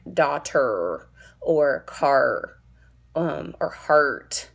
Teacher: in English, we have the R's way back in our throat, at the very back of our mouths